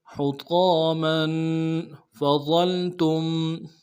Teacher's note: میم کے اوپر تنوین ہے، غنہ کریں گے۔ حطاما فظلتم، فظلتم میں فا کو نون سے ادا کریں گے، ضا کو موٹا کرتے ہوئے لام کے ساتھ ملانا ہے، لام ساکن غنہ آنی ہوگا، تا کو میم ساکن کے ساتھ ملانا ہے، غنہ کریں گے۔